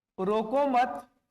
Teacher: अब मैंने मत पर बल दिया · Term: बलाघात